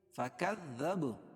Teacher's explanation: کاف کو ذال میں سختی سے ملائیں گے اور با پر قلقلہ کریں گے